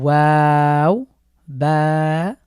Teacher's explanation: ওয়া উচ্চারণের ক্ষেত্রে আমাদের ঠোঁট দুটো গোল হয়ে যাবে এবং আবারো স্বাভাবিক হয়ে আবারো গোলাকৃতি ধারণ করবে বা মিম এরপরে